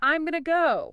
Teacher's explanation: You've got the standard contraction I am to I'm, plus the very common reduction going to becoming gonna. And gonna links right into go. Gonna go. See, 5 words on the page become what sounds like 3 connected chunks.